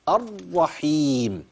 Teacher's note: ما تحطش الف بعد الراء وتشبع الفتحه